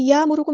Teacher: हमज़ा साकिन है तो यहाँ पे हम झटका देंगे। यअमुरुकुम नहीं पढ़ना।